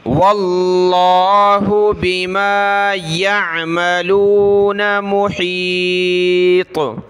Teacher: یہاں ہا نکالیں گے اور طا کو موٹا پڑھنا ہے